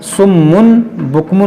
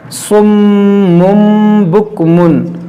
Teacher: صم بکم عمی فہم لا یعقلون، یہاں پر دیکھیں تنوین کے بعد با ہے تو یہاں پر اقلاب کریں گے، یہاں پر ہم سمن بکمن نہیں پڑھیں گے بلکہ سمم، یہاں پہ جو تنوین کے جو نون ساکن ہے اس کو ہم میم سے بدل کر پڑھیں گے۔ سمم بکمن عمی فہم لا یعقلون۔